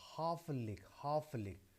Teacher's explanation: So you can see how the first syllable is stress and the following 2 syllables is unstressed or weak. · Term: dactyl